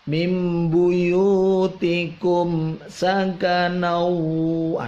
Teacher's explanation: Mimnya tidak terlalu lama di bacanya, tetapi langsung bibir yang mengatup langsung dilepas.